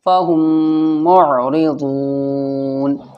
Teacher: میم ساکن کے بعد یہاں پر دوسرا میم بھی آ رہا ہے تو کیا ہوگا ادغام شفوی غنہ ہوگا